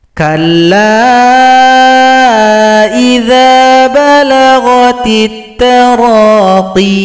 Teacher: Kemudian di sini kalau kita berhenti, huruf ya disukunkan, kemudian huruf qaf yang berada sebelumnya dipanjangkan 2 ketukan.